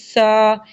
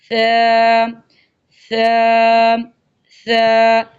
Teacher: سیٹی نہیں آئے گی بلکہ نرمی سے پڑھا جائے گا، دونوں دانتوں کے درمیان زبان کی نوک کو باہر کی طرف نکال کر